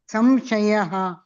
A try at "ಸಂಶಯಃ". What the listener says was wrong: सं ಅಲ್ಲ ಸಂ ಸಂ ಸಂ ಸಂಶಯಃ ಅಲ್ಲಿ ಮ ಹೇಳ್ತಾ ಇದ್ದೀರಾ ನೀವು ಸಂಶಯ ಅಂತ ಇದ್ದೀರಾ ಮ ಬರಲ್ಲ ಅಲ್ಲಿ ಸಂಶಯಃ ಬರುತ್ತೆ ಸಂ ಮಾತಾಜಿ ವ ಅನ್ನಿ ಸಂ ಅನ್ನಿ ಸಂ ಸಂಶಯಃ